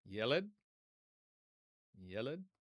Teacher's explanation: Accent on the first syllable or stress on the first syllable.